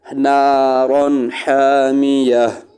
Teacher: نارن پر بھی ہم نے غنہ نہیں کیا، اس لیے کہ نارن را کے اوپر تنوین ہے، اس کے آگے ہا ہے ، ہا، اور یہ ہا بھی حروف حلقی میں سے ہے۔